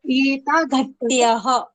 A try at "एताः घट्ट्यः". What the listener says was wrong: Etaha ghatyah. Samyak. Excellent.